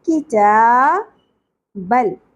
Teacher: ان کی تا، تا کے اوپر کھڑی زبر ایک الف کے برابر. کتابل، لام ساکن پہ قلقلہ نہیں ہونا چاہیے